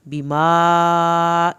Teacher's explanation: بیما کو حرف مد واجب کی وجہ سے 3 الف کے برابر لمبا کریں گے